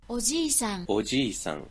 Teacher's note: en milieu de mots, ce J, il peut être prononcé soit de la même manière avec le de, donc J, soit il peut se prononcer comme notre J français, comme le je.